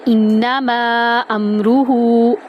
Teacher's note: حمزہ کو نون میں داخل کیا اور غنہ کیا